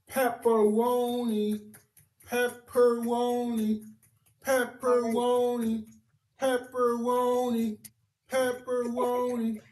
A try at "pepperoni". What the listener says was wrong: He's pronouncing he's pronouncing the R's in pepper, but then pronouncing it as a W for Roni.